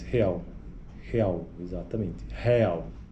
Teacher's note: Um brasileiro nascido em Recife apresentará sempre vogais pré-tônicas abertas, como em real